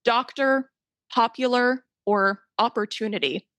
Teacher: this A sound that we hear in father we find it in a lot of these O words that we use really frequently